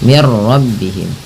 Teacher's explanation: Nah, karena di sini nun mati bertemu ra, langsung saja diidghamkan. Idgham itu memasukkan bunyi nun ke ra sehingga bunyi nunnya tidak terdengar lagi. Langsung mir rabbihim. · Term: idgham bila gunnah